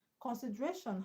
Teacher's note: Consideration has a stress on RA, which is second syllable from the end. Consideration ends with TION, and one ends with TION, you should stress the second syllable from the end, RA.